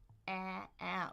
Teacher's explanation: tongue in the front, open jaw. A a really push that tongue forward.